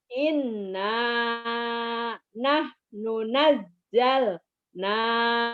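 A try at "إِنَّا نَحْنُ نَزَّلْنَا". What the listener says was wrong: Salah. Nanya jadi pendek atuh. Nah, ini pendek karena ketemu tasdid.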